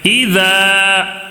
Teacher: الف سے پہلے زبر ہے تو ایک الف کھینچ کر پڑھنا ہے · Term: الف مدہ